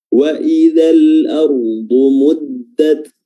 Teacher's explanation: huruf dhad makhrajnya adalah hafatul lisan, tepi lidah bertemu dengan gigi geraham, entah itu gigi geraham kanan atau gigi geraham kiri